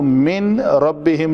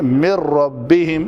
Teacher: اس نون کا را میں ادغام ہو جائے گا مکمل، یہاں پہ تشدید ہے تو نون غائب ہو جائے گا یہاں سے